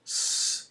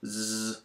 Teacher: all kinds of vibration here if you're saying F no vibration S no vibration Z lots of vibration